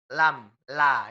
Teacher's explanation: la suaranya keluar dari tepi lidahnya ini, Bu. Kiri dan kanan.